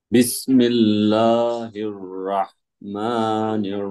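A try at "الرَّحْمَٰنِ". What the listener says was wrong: ভুল হয়েছে জানেন? বিসমিল্লাহির রাহ হয়ে গেছে। রহ। রহ।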